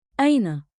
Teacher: >> One beat like in with a light catch at the start